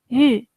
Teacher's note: কিছুটা মুখ গোল করে জিহ্বা সামনের দিকে এনে তারপরে বলতে হয় ইউ